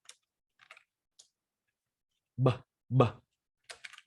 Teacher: Âm B thì hai môi này mím lại và bật hơi ra. B, b. Đồng thời rung họng các bạn nhé.